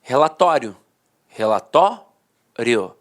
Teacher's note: a penúltima sílaba era a sílaba mais forte e a última de fato perdia a força Então os dicionários registravam assim ó re la tório sempre foi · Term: paroxítona terminada em ditongo